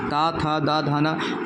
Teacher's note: जबान जो है दांत से टच होता है तो वही दंत ध्वनियां हो गई